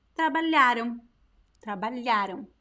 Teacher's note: But the stress of the syllable is lha. It is the second to last. Words in Portuguese that have no graphic accent most of the time are stressed at the second to last syllable.